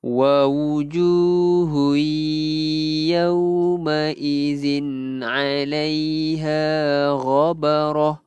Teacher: tanwin bertemu ya, idgham bi gunnah. Idgham masukkan beserta dengung, dengungnya dua harakat.